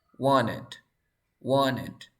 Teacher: NT, sonido de vocal, se elimina la T.